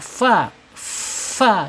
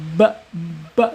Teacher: ujung gigi seri atas menyentuh perut bibir bagian bawah fa jadi udaranya tetap mengalir ya bukan tertutup seperti ba